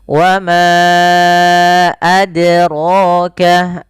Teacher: ro-nya tebal karena dia ada fathah pada lafal huruf ro